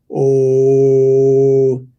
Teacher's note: o is made with an open mouth and can be maintained for a while